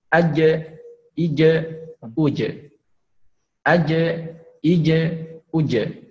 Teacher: ketika huruf jim ini sukun, maka kembali kepada hukum qalqalah, yaitu harus dipantulkan ya.